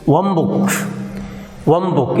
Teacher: So you can see here how the impact of neighboring sound takes place on the nasal sound n. N becomes bilabial m because the next consonant, that is b, is bilabial. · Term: assimilation